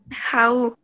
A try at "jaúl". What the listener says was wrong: Jaúl, porque lleva la L de último. Ajá, sí, Jaúl.